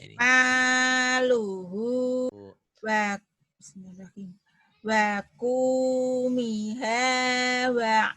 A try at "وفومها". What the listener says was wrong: bukan waku ya Bu, titiknya satu, wafu. وفومها وعدسها وبصلها.